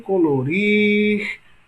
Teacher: Rir é a mais longa, portanto, é a mais forte.